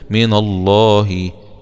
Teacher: اسم الجلالة هنا اللام مغلظة لأنها جاءت بعد حرف مفتوح